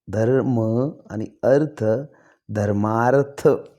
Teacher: अ आणि अ हा जो स्वर एकत्र आला आहे याचा आ शब्द हा वर्ण तयार होतो